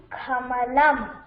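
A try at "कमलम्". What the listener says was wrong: இது இது ஆஸ்பிரேட் இல்லாம சொல்லணும். கமலம்.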